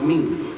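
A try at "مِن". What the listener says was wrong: Dibaca samar. Sebetulnya dengung sambil Ming, ming, bukan min, tapi ming. Samarin.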